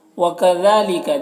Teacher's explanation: وَكَذَلِكَ، دیکھیے یہاں پر کاف کو باریک پڑھنا ہے، ذال کو بھی باریک پڑھنا ہے، اور کھڑا زبر ہے، یہ الف مدہ کی طرح ہوتا ہے تو اسے ایک الف کے برابر کھینچ کر پڑھیں گے، اور جن حروف میں زبر زیر پیش ہے اسے جلد پڑھنا ہے۔